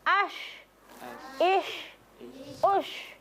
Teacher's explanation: Jadi huruf syin itu keluar dari tengah-tengah lidah ya. Menempel tempat landasannya di atas langit-langit.